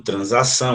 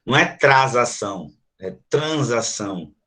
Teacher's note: depois de um som nasal, uma vogal acompanhada de um N, o S também vai ter som de Z